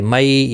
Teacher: مئی یالین ہے، تھوڑا نرمی کے ساتھ کھینچ کر ادا کریں گے۔